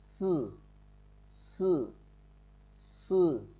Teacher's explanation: Tiếp tục, chúng ta có chữ SC phát âm gần giống như chữ sư sờ nhẹ của tiếng Việt, nhưng âm phát ra sát và hơi tắc một chút.